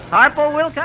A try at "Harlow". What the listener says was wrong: No, Harlow Wilcox. No, Harlow. L, not P.